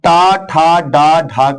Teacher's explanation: ट, ठ, ड, ढ का उच्चारण स्थान मूर्धा है